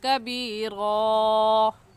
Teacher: کاف باریک حروف میں سے ہے, باریک کر کے پڑھے گا یعنی آپ کے دونوں ہونٹ پھیل جائے